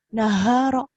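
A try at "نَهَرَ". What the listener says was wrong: naharo, nggak ada yang panjang. Naharo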